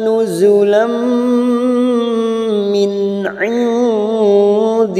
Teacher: nun sukun bertemu dal ikhfa hakiki, kita samarkan bunyi nun sukun